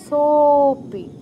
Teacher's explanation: এই অবগ্রহ বা লুপ্ত অ যেখানে থাকবে তার ঠিক আগের অক্ষরটা তিন মাত্রায় উচ্চারণ করতে হবে। ওই আগের অক্ষরের প্লুত উচ্চারণ হবে।